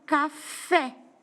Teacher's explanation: o exemplo da palavra café, onde a última sílaba forte é o fé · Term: oxítona